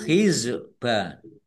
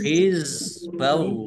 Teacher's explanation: za sukun bukan kolkolah jangan dipantulkan. Jangan dibaca hizba tapi hizballahi Allahnya dibaca tebal karena harokat di depannya fathah.